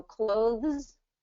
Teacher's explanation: if I'm going to slow it down and go clothes I'm going to get that voice th sound in there